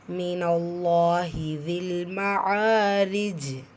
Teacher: ரா கெஸ்ரா பெற்று வந்திருக்கு, மெல்லினமாக ஓதணும். வசனத்துடைய முடிவில் ஜீம் வந்திருக்கு. கல்கலத்துல் குப்ரா பெரிதாக அசைச்சு ஓதணும்.